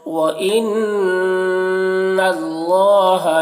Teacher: نون مشدد ہے، نون میں غنہ ہوگا اور اللہ کلام کو پر پڑھیں گے، اللہ کلام سے پہلے زبر ہے.